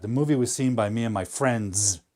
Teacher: Because in English, a statement like that, the movie was seen by me and my friends, the tonality kind of, the intonation drops at the end